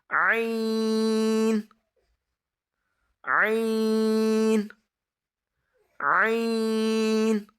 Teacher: عین بھی گلے کے اندر والے حصے سے ادا ہوگا